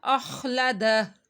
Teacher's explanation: خا حروف مستعلیہ میں سے ہے، خا کو موٹا پڑا جائے گا